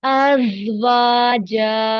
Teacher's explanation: जा को buzzing sound, वाव और जीम को टू काउंट रखेंगे। अज़वाजा।